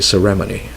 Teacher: We put the stress usually on the second, on the RE